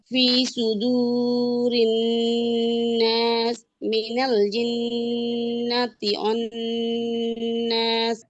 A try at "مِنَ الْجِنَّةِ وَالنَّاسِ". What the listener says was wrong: আচ্ছা অন্নাস না ওয়ান্নাস হবে হ্যাঁ ওয়াও হবে আচ্ছা এক মিনিট